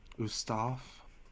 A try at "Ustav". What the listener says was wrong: V, not F. Ustav.